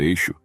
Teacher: a consoante xin por não haver em grego som correspondente a essa consoante fricativa palatal que soa como X por exemplo a palavra eixo os judeus a substituíram por Sigma